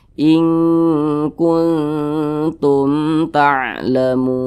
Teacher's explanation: Nah, ya berarti hukumnya adalah izhar syafawi seperti itu. Dibaca pendek saja, dibaca jelas, tidak berdengung. Jadi jangan ditahan suaranya.